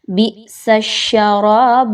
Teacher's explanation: بئسا میں آپ نے حمزہ کے ساکن کا جھٹکا دیں اچھے طریقے سے